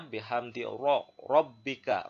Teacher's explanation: bihamdi robbika ya, ro itu juga dibaca tafkhim tebal.